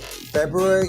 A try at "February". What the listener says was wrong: no February there's an R it's February